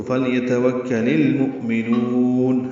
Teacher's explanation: حمزہ ساکن جھٹکے سے ادا ہوگا، میم کو جلدی پڑھیں گے، نون میں نو کو لمبا کریں گے، وقفاً مد عارض سکون ہے۔